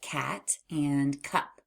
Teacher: we need to release a puff of air while touching the back of our tongue to the roof of our mouth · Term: hard C sound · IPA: /k/